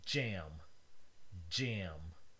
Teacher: a stop and a fricative produced at the same time